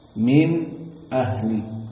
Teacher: the meaning here as-saqt is you just stop and give time just 2 harokat